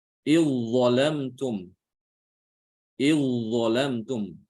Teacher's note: Idzalamtum. Ya, zalnya itu langsung dimasukkan ke dha ya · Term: diidghamkan